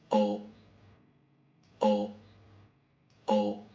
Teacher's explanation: Round your lips and make a sound similar to the Japanese O. However, at the end, close your throat and stop your breath as you finish the sound.